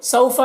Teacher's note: اس واو لین کو نرم آواز کے ساتھ جلد پڑھیں گے